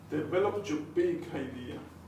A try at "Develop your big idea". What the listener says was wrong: But both words in bold, not just one. Your big idea. That's it, join together.